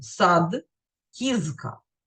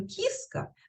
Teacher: на уроках української ну передусім пам'ятаємо що українська мова дзвінка мова приголосні не оглушуються в кінці слів і перед глухими